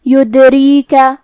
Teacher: قلقلہ کا معنی ہے حرف ساکن کو ہلانا، تو ہم حرف الدال کو ہلاتے ہوئے یہ کلمہ کو ادا کریں گے